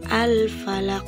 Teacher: satu huruf Qalqalah yang mati karena waqaf atau di akhir ayat cara membacanya adalah dengan memantulkan huruf Qalqalah yang lebih jelas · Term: qolqolah kubro